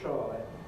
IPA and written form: trɑɪ (try)